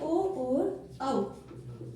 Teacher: ओ देतौ कंठ ओष्ठम, यानी ओ और औ, ओ और औ इन दोनों का उच्चारण स्थान होता है कंठ और ओष्ठ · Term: कंठोष्ठ